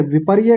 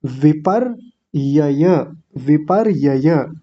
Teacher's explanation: विपर्य कह देते हैं, एक य को खा जाते हैं।